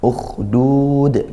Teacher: Ukhdud, ada kha sukun. Nah, makhrajnya dari tenggorokan ujung ya, atas, sudah mendekati dengan lisan, sudah mendekati lidah. Dialirkan suaranya juga, dan suaranya ngalir, ada desisan cuman tidak sedesis huruf-huruf sin